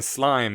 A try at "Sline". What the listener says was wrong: Sline. you said slime with an M. Sline.